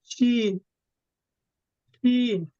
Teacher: জিহ্বার মধ্যখান তার বরাবর উপরের তালুর সঙ্গে লাগায় উচ্চারিত হয় শিন